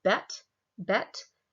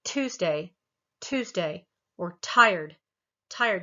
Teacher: you go tuesday tuesday or tired tired you'll feel that aspiration you'll feel that little bit of breath of the air that comes out with the tuesday and and tired